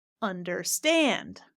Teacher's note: the stress in a three-syllable word is on the third syllable